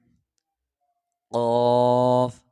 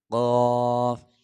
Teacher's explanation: حلق سے پڑھیں گے موٹا کر کے